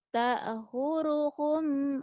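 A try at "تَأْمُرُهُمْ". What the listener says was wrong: tak muruhum, bukan tak huruhum. Itu mim.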